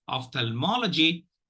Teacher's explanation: the first syllable gets the secondary accent, the third syllable gets the primary accent.